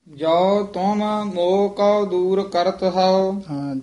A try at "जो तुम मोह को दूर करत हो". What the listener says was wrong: जो तुम, मम्मी दे हलंत लग गया, मोह को दूर करत हो, करत हो संबंधक पाठ है।